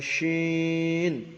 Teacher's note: জিবের মাঝখান, তার বরাবর উপরে তালুর সঙ্গে লাগিয়ে উচ্চারিত হয় শিন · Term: বড় শিন